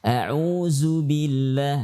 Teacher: Huruf dzal memiliki sifat jahar. Kenapa? Karena tidak boleh melibatkan atau menghentakkan nafas pada saat mengucapkannya.